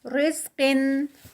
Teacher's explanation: را لائٹ ہوگی یہاں پر، ہیوی نہیں ہوگی. قن، قاف ہیوی، رزق، اور قاف کا اینڈ پہ قلقلہ.